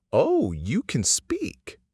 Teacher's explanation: When this sentence is affirmative, the word can is emphasized.